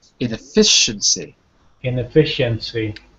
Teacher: Inefficiency with the stress on the fi.